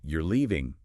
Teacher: But if you say you're leaving, falling tone, that's a statement.